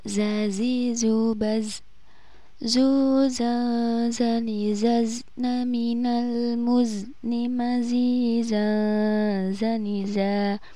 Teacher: Ini harus dibaca dengung karena ini termasuk hukum bacaan ikhfa, yaitu nun sukun bertemu huruf za.